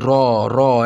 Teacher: রণ কোন জাতীয় ধ্বনি র হচ্ছে র হচ্ছে কম্পন জাত ধ্বনি র র একটা কম্পন অনুভূতি হয়